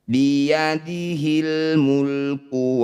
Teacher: Alif diikuti lam sukun disebut bacaan idhar qamariyah atau alif lam qamariyah. Bunyi lam sukunnya baca dengan jelas, tidak usah diseret.